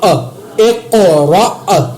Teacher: حمزہ زیر قاف اق، را زبر حمزہ را، اق را، ٹھیک ہے، یہاں پر میں نے قلقلہ کیا، آگے حمزہ کے اوپر جھٹکا دے کر پڑھا، را نہیں پڑھا کیونکہ یہ جزم نہ ہوتی پھر یہ الف مدہ ہوتا، جزم کی وجہ سے یہ حمزہ میں تبدیل ہو گیا۔